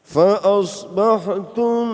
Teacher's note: mim fa asbahtum, kata habis mim ada ba itu dibaca namanya ikhfa syafawi. Ikhfa syafawi berarti ditahan, didengungkan. Fa asbahtum, nah itu satu alif mendengungnya itu.